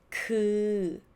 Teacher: You relax your lips. You don't try to pull your lips together. Relax it. Open a bit of the mouth.